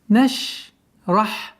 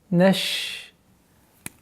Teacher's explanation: Отличительной чертой звука шин является, что у этого звука есть свойство тафаши, то есть произношение медленно, резкое произношение категорически запрещается, потому что аннулируется вот это свойство.